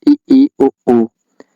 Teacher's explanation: इसके उच्चारण में कम मुख खुलता है। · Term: संवृत स्वर